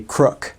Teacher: So if we were to say like, oh, that guy is a crook, you can hear the K really pronounced on the end of crook